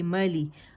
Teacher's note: میم پہ زبر ہے، آواز ایک کاؤنٹ کے اوپر جائے گی، جبڑا کھلے گا، لی کے لیے آواز نیچے جائے گی، مالی، ملے نہیں پڑھیں گے، ملے بالکل نہیں، رانگ ہوگا، ٹھیک ہے۔